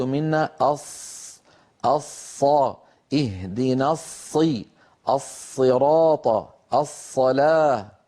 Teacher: منتهى طرف اللسان، وإن شئت فقل رأس اللسان. لك أن تقول رأس اللسان، ولك أن تقول منتهى طرف اللسان، مع أسفل الصفحة الداخلية للثنايا السفلى.